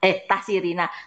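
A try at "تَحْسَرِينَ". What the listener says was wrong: tahsarina. Sahnya nggak boleh diganti tuh Bu.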